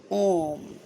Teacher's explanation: तीन मात्राओं का समय लगता है इसका प्रयोग संस्कृत में अधिक होता है